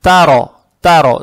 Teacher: Здесь буква «та», она мягкая, с фатхой. Далее стоит буква «ро» с фатхой. Эту фатху ни в коем случае не тянем. Фатха приобретает оттенок «о»